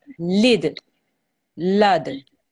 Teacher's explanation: Remember there's a slight jerking sound when you have a dal with a sukoon or you're stopping on a dal. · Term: kalkula